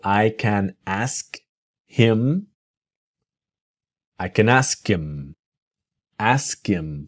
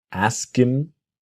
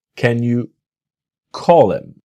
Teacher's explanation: native speakers don't always pronounce the letter H when we speak quickly